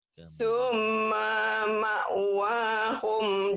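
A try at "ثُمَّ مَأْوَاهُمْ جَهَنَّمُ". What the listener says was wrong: Maknya pendek. Somma ma, maknya pendek. Somma ma. Pendek. Somma ma'wahum jahannam. Somma ma'wahum jahannam. Somma ma'wahum jahannam.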